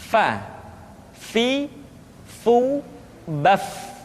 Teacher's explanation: Diucapkan dengan menyentuhkan ujung dua gigi seri kita bagian atas dengan bibir bawah bagian dalam. Fa. Seperti kita mengucapkan huruf F di dalam huruf Latin. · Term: huruf Fa